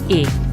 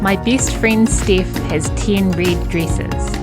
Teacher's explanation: the tongue is quite high when we make the dress vowel in new zealand english and the lips are quite open